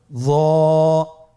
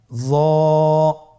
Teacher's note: জিহ্বার আগা, সামনের উপরের 2 দাঁতের আগার সঙ্গে লাগিয়ে উচ্চারিত।